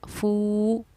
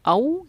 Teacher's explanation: अगर वाव साकिन से पहले ज़बर हो तो वाव हुर्फ़ लीन नरम आवाज़ के साथ जल्दी अदा की जाएगी, लेकिन अगर वाव साकिन से पहले पेश है तो एक अलिफ की मिक़दार के बराबर हम उसको खींच कर पढ़ेंगे